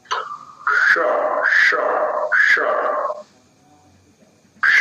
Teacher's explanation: निकलने दे रहा है करण और स्थान के मध्य में से वायु थोड़ी ऊष्मा स ले हुए निकल रहा है तो इसलिए इसको उष्म वर्ण कह दिया जाता है